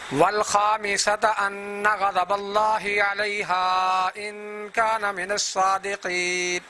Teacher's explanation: اس انا پر بھی غنہ اور اس ان پر بھی غنہ ادا کرنا ہے. من الصادقین کے قاف کو موٹا، صاد کو موٹا، اور وقف کرتے وقت آخری نون کو بھی ہم ساکن کریں گے